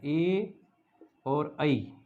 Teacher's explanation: ये होगा एत और ऐत, एत और ऐत, तो एत का तय से द बन जाता है और द में ऐ, तो एदयितो, इन दोनों वर्णों का उच्चारण एदयितो कंठ तालु, ऐदयितो कंठ तालु, यानी कि ए वर्ण और ऐ वर्ण, इन दो वर्णों का जो उच्चारण होता है वह कंठ तालु से होता है